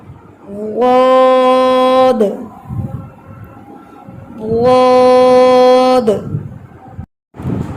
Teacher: زبان کا موٹا کنارہ داڑوں کے ساتھ رگڑتا ہے تو پڑھا جائے گا. آپ نے سامنے نوک سے نہیں پڑھنا. یاد رکھیں زبان کی نوک سے نہیں پڑھنا سائڈ سے پڑھنا ہے.